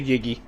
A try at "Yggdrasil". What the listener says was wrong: The first G is silent. And actually, if you're going by Norse mythology, it's Yggdrasil.